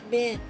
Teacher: This is because you are trying to redirect the flow of air through your nose. And when you say the word bin with your nose closed, the air can't escape.